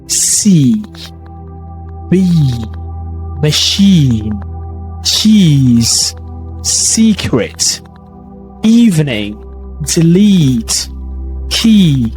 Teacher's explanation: A long E sound is a long front, lips slightly spread.